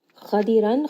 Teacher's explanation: Ra in this case is heavy as well because it has a fatha.